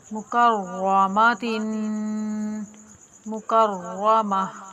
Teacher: वक्त में ता को हाय साकिन से बदल कर पढ़ेंगे।